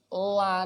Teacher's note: kalau lam itu la niku lidahnya di atas gigi depan. Nanti ini gusi atas la.